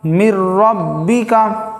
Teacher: نون ساکن کے بعد حروف یرملون میں سے را آیا ہے، را آنے کی وجہ سے غنہ کے بغیر پڑھیں گے